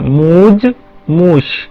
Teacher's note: जो गूंजने वाले हैं, गले में कंपन करने वाले हैं, वो अघोष वालों में बदल जाते हैं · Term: अस्वर्यकर्ण